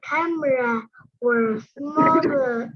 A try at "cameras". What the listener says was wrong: if there is an S at the end of the word, you have to say it. So it's cameras.